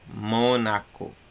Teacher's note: O mó é a tônica, por isso que ele está lá em cima.